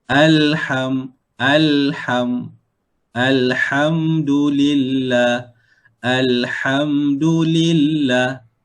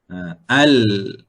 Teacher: Tertahan di mana? Tertahan di bahagian gusi. Dan mengalir di mana? Mengalir di bahagian tepi. Tepi lidah. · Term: bainiyah